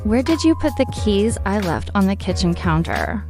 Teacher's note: Notice the rising intonation at the end because it's a question.